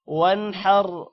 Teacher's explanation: واو نون زبر ون، حا را زبر حر، ون حر. اب یہاں پر ون پر غنہ کیوں نہیں ہو رہا؟ کیونکہ آگے حروف حلقی حا ہے